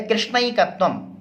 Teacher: उसमें जो ऐ है उसका उच्चारण स्थान कंठतालु है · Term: वृद्धि